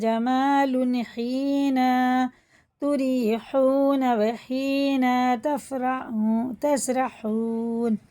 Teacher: بڑا ہا ہے دونوں تینوں چاروں، اور یہ حرف مدہ ہے، یہ بھی مدہ ہے، یہ بھی مدہ ہے. تینوں ہا کو حلق کے درمیانی حصے سے پڑھیں گے اور کھینچ کے بھی پڑھیں گے